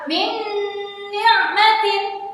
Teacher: Min ni'matin itu udah salah ya. Jadi harus dibaca dengan memasukkan dengan cara mendengung. Ada dengungannya. Min ni'matin seperti itu.